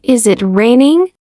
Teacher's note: Try saying it out loud first in a flat tone, then again lifting your voice softly at the end, like a gentle tune